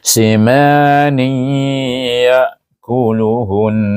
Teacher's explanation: tanwin bertemu dengan huruf ya dibaca dengan idgam alghunnah dengan dengung dua harakat